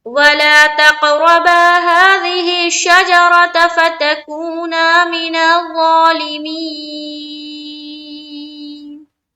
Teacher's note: नून के ऊपर वक्फ करेंगे तो जबर हट जाएगा और हम यहाँ पर लाएंगे सुकून